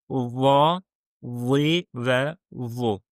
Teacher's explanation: biz bu hərfi həm pəltək tələffüz edirik, həm də qalın. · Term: va hərfi